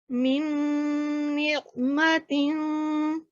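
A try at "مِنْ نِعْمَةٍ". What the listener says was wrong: मुझे ऐसे महसूस हो रहा है यहाँ पर आप मीम की आवाज दे रही हैं। मिन निअमतिन। मुझे लगता है कि यहाँ पर आपकी नून के बजाय मीम की शायद मुझे सुनने में गलती लग रही हो, तो हमने गुन्ने की आवाज देनी है, उसको नून के साथ इसको करें।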